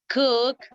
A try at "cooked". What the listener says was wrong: But if you say cook, you pronounce the verb in the base form. Yeah, we need to emphasize the D, the D.